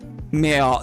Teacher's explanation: The rhotic R's in French is like farther back in the throat.